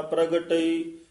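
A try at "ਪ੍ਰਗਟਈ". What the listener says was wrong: हां जी, प्रगटई इस तरह उच्चारण करना।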